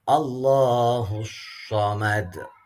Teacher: Allahnya ini jalalah tafkhim lagi karena diawali dengan fathah.